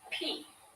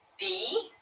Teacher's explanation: So we have P, no vibration, and B, vibration.